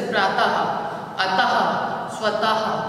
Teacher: जिसको विसर्ग बोलते हैं और ये ह की ध्वनि देता है। जैसे प्रातः, अतः, स्वतः, ये सब जो है ये विसर्ग हुए।